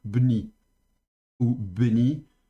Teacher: Donc, normalement, ici, on a un mot qui commence par une bégat kefat, le bet. Elle est en début de mot, elle a donc un dagesh léger. On la prononcera donc de manière occlusive, donc bni ou beni, un peu plus long sur le schwa, mais ça, de nouveau, c'est selon les écoles.